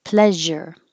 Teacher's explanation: this sound is the same as shh but with voicing